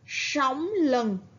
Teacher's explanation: âm s khi đọc phải cong lưỡi. Ở tiếng lừng, các bạn chú ý vần ưng.